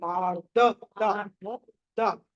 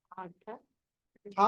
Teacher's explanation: ధ అంటున్నారు మీరు ఒత్తు కాదు ద లైట్ గా పలికా ద మళ్ళీ మీరు గట్టిగా అంతా నాకు వినిపిస్తుంది నాకు వినిపించట్లేదు ద ఓకే